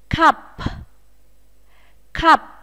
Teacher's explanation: p ở cuối của từ chúng ta cũng phải bật hơi nhé